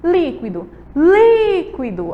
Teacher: A gente sabe aí que líquido, a última, a antepenúltima é a li. A sílaba li, ela é a mais forte, certo? E ela vai ser acentuada. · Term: sílaba tônica